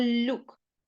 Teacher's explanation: літера ю пом'якшує приголосний л тому ми читаємо Люк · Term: М'який приголосний